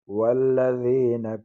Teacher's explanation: لام مشدد ہے، 2 مرتبہ پڑھا جاتا ہے، لام کو باریک پڑھیں گے.